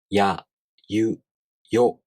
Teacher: when you pronounce ya, you first make the E tongue position, but not fully pronouncing it. Then the tongue quickly moves on to the next vowel sound. In this case, the A vowel sound. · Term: semivowel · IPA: [j]